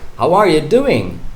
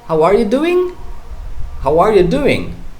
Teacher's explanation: when i say how are you doing i'm not giving a rising tone